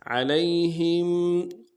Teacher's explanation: ہم میں میم ساکن غنہ کریں گے